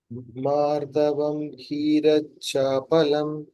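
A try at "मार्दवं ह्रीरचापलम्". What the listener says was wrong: It's hrir. Her ke niche there is a small r also, adha r. Hrirachapalam.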